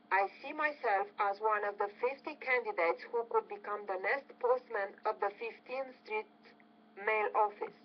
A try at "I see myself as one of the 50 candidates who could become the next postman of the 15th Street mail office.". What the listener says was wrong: Nice. Good stress on everything.